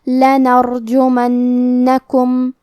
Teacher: حرف الجیم پہ پیش ہے اور میم پہ زبر ہے تو ہم یہ دونوں حرکات کو ظاہر کریں گے اور حرف النون کو 2 حرف کے برابر پڑھیں گے کیونکہ اس پہ تشدید ہے